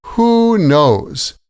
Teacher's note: the stress is on both words with a pause between them.